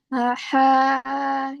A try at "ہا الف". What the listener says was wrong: یہ ہا کے بعد الف بھی تو ہے نا؟ ہا الف.